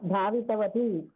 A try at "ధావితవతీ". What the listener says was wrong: వతీ దీర్ఘం.